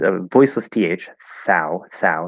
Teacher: it's a voiceless th, thou, and that's of course the ow diphthong